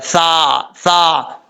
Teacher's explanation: سا میم پہ سم، میم زبر ما، ثم، سا جو ہے بغیر سیٹی کے ساتھ پڑھا جائے گا، اس کو سیٹی کے ساتھ پڑھنے کی ضرورت نہیں ہے۔ اس کا مخرج ہے زبان کا سیدھا اوپر والے دانتوں کے اندرونی کنارے سے لگے تو سا پڑھا جاتا ہے